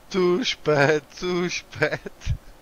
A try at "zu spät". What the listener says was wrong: Zu spät, not too spät. Zu spät.